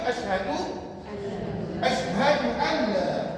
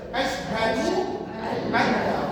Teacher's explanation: Dia akan baca nun ni masuk dalam lam. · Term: idgham bila guna